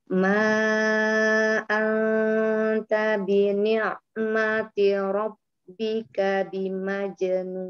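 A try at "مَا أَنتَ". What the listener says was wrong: Ma anta, nunnya tipiskan ya. Coba diulang.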